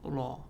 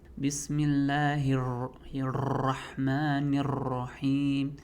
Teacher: Maybe not that exaggerated, but there should be no rolling on the Ra